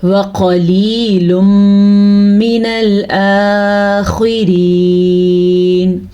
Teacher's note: واو اور قاف کو لمبا نہیں کرنا، لیکن لام زیر یا لی یا مدہ کو کھینچ کے پڑھنا ہے کیونکہ یا ساکن سے پہلے زیر ہے.